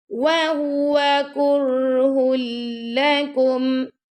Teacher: را کے اوپر آگے جزم یعنی سکون آ گیا نا، تو را کو اپنے نرمی سے پڑھنا ہے. کر ایسے نہیں پڑھنا، ٹھیک ہے نا، یعنی اس میں تکرار نہیں آنی چاہیے.